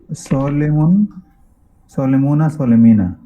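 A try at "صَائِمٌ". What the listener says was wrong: সলিম না সয়িম, সয়িম মানে রোজাদার।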